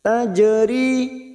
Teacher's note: Jim sukun qolqala sugr yang mati asli di tengah kalimat kita pantulkan